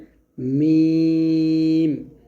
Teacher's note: মিমটা দুই ঠোঁট মিল করে বলবো।